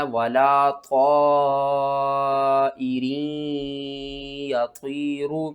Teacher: آپ نے طا کو موٹا کر کے پڑھنا ہے، 5 الف کے برابر کھینچ کر پڑھنا ہے